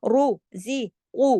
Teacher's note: را موٹا پڑھیں گے، را پہ پیش ہے